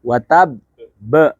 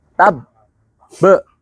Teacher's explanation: cara membaca ba bertasydid atau qalqalah bertasydid jangan langsung pantulkan. Tahan dulu.